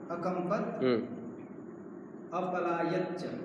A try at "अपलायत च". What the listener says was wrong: हाँ अपलायत च, ये त पूरा बोलो।